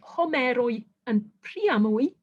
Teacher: you've got a diphthong in the final syllable, and yet the accent makes it onto the third syllable from the end